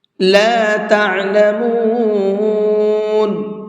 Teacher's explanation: عین کو حلق سے نکال کر کے پڑھیں گے، اور میم کو میں نے تھوڑا سا زیادہ کھینچ کر کے پڑھا ہے، حالانکہ یہاں پر مد نہیں ہے۔